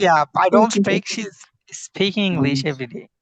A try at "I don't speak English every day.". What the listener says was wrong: Good. I don't speak English every day. Good. Mashallah. Great.